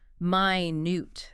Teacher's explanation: Stress on the second syllable minute. That's the adjective meaning very very small tiny.